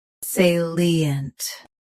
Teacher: Both US and UK have the same pronunciation of this word. Stress say first. Keep lee clear. And end with a soft unt.